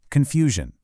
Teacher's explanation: It has that soft sh sound right in the middle